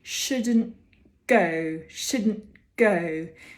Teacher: when we have a t before another consonant like a good we get a little glottal stop